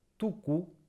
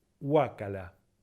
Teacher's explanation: En tu, la U está para adelante y en hua, la lengua se va para atrás.